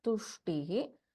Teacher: In this, Sha is the Shanmukha Sha. And we have Alpa Prana Ta.